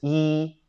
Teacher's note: It's just E, you know, the E, okay? And it's the flat tone, the robot tone